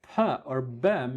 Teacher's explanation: the two lips totally constrict the air they are totally blocking and suddenly let the air through in applo savour explosive manner it's like a sudden just one